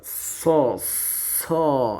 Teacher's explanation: huruf shad itu sifatnya apa? Hams. Nafasnya berjalan keluar.